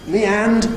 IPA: mi ˈænd